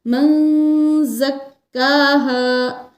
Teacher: قد کے دال پر قلقلہ ہوگا اور من زکاہا نون ساکن پر اخفا کریں گے، کیونکہ نون ساکن کے بعد زا حروف اخفا کی ہے، اس لیے یہاں نون کی آواز کو چھپا کر پڑھیں گے ناک کے اندر